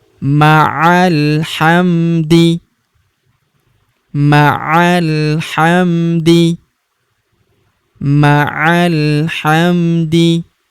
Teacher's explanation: Alifnya tidak dibaca atau tidak dianggap. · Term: hamzah wasol